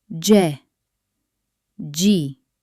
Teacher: before e or i, it turns into a soft j sound, like joy.